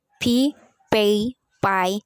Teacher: The bilabial stops. Voiceless bilabial stop.